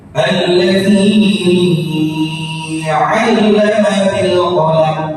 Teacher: Kalimat alladzinya pada huruf zi panjang dan lebih dari 2 harokat